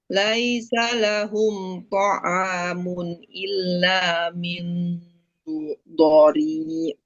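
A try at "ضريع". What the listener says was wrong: Ya, jelaskan ain. Dhari'.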